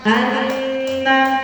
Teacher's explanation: ketika kita pijit hidung kita maka dia tidak sempurna suaranya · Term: Nun yang bertasdid